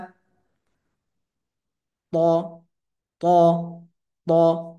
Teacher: ত বলার সময় কিন্তু জিহ্বার গোড়াটা একটু উপরের দিকে ধাবিত হচ্ছে, যার কারণে হরফটা মোটা হচ্ছে।